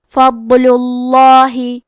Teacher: ہم لفظ الجلالہ مطلب کلمت اللہ کے لام کو موٹی آواز میں پڑھیں گے